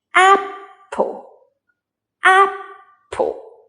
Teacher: in the word apple, A is the stressed syllable. The stressed syllable is often pronounced longer, louder, and higher in pitch.